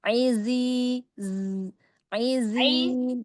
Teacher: Tapi tidak seperti ditasdidkan ya, bukan iz ya, tapi izi ada sofirnya ya di awal.